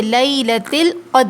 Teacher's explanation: لیلۃ القدر، دیکھیے لیلۃ القدر، یہاں جو دال ہے یہ ساکن ہے، اور دال جو ہے حروف قلقلہ ہے، جب ساکن ہوتا ہے تو آواز پلٹ کر آتی ہے